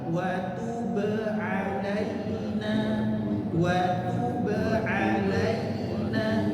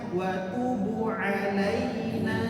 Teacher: Tub, be, enggak tertahan qalqalah, tapi memantul alami, ya.